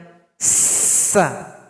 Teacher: Jadi lidah kita berada di belakang gigi. Bunyinya tajam. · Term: huruf sin